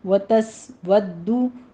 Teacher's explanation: سین کے اوپر سیٹی کی آواز ہوگی، ہمز پیدا ہوگا ، ودو میں دال کے اوپر تشدید ہے اور اوپر ضمہ